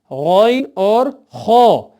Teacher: غین اور خو گلے کے اس حصے سے جو ہمارے منہ سے ملا ہے یعنی ادنی حلق سے پڑھے جاتے ہیں۔ اب خو کی باری جب آئی تو خو حروف مستعلیہ موٹے حروف میں سے ہے، اس کی پوری تفصیلات سے آپ کو آگاہ کر چکا ہوں۔